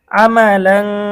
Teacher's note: তানভিনের পরে ইকফার হরফ সদ এসেছে গুন্না সহ পড়তে হবে